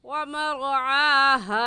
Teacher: ومرعاها میں را ساکن ہے اور را ساکن سے پہلے والے لفظ کے اوپر زبر ہے، تو اس را ساکن کو پر یعنی موٹا کر کے پڑھیں گے. اور موٹا کرنے کا طریقہ کہ آپ کے دونوں ہونٹ گول ہو جائے